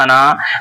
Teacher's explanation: انا جہاں پر بھی لفظ انا آئے وہاں کھینچیں گے نہیں، اس طرح ایک الف کے برابر کھینچ کے نہیں پڑھیں گے.